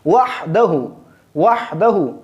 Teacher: وحدہ میں جو ہا ہے یہ ہم نرم پڑھیں گے، حلق کے درمیانی حصہ سے ادا کریں گے